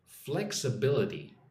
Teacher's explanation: Put some emphasis on the first and third syllable.